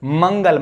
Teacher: हवा जो है उच्चारण करते समय नाक से निकलती है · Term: अनुस्वार